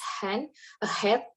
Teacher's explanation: this consonant is produced by the close contact of the vocal folds that produce friction. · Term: glottal